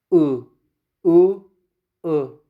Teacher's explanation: We make our lips round, and with the back of the tongue we say U, U, U.